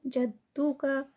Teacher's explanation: जद्दू का, यहाँ पर दाल जो है तशदीद के साथ है, दो दाल पढ़े जाएंगे, जद और फिर दो, तो इसलिए जद्दू का।